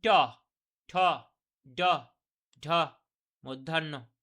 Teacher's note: এগুলো দেখুন মূর্ধা থেকে মূর্ধার মধ্যে উচ্চারণ হচ্ছে